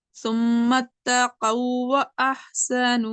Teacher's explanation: पहले वाले वाव को हम स्किप कर दिए, नेक्स्ट वाले वाव को हम पढ़ रहे हैं क्योंकि यहाँ पे हो रहा है मिसलाइन ताम वाला इदगाम। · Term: इदगाम ताम